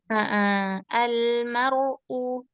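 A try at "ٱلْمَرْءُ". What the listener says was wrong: Sedikit lagi, ditipiskan.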